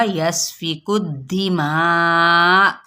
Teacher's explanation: حمزہ ساکنہ پہ ہلکا سا جھٹکا دے دیں گے